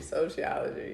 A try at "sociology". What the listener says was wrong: You're putting an H in there. Sociology.